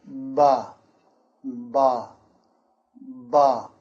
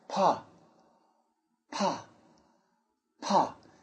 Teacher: with the B, there should be some vibration. Ba, ba, ba.